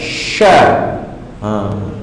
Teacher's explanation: huruf shin ini berada pada pertengahan lidah kita bertemu dengan langit yang a'la, hankul a'la, sya.